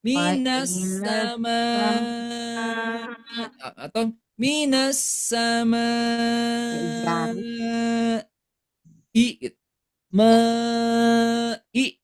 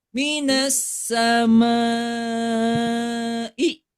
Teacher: Tadi ketukan pertamanya pada kata sama yaitu mimnya. Kemudian ketukan kedua panjang yaitu ketika panjangnya. Nah, ketukan ketiganya huruf ham Hamzah ya. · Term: empat harakat